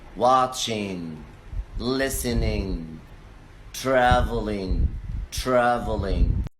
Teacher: ing, at the end of the word will be in